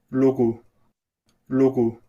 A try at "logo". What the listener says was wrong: Nosotros usamos logo, logo, O, pero acá no. Acá usan una O corta, logo, logo. Se nota la diferencia que no es la misma O, son O diferentes.